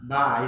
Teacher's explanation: Jadi bibir atas dan bibir bawah itu bertemu dan tidak kuat ketemu. Tidak boleh kita nyebut ba, tidak boleh tapi ba. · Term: syafatain